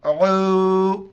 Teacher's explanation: عین کو واو کے ساتھ ملائیں گے اور عین کو گلے سے ادا کریں گے. یہاں پر مد ہے 4 الف کی مقدار کھینچنا ہے.